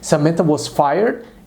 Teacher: adotou uma entonação especial ascendente porque se trata de uma surpresa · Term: tom ascendente